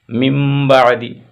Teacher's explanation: نون کو میم سے ہم بدل کر کے پڑھ رہے ہیں اس لیے قلب کہیں.